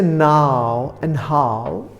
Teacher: आओ, जैसे नाउ एंड हाउ, उसके लिए ये दो वाउल साउंड्स कंबाइन होंगे और हिंदी में इस तरह से सुनाई देंगे. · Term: डिफ्थंग्स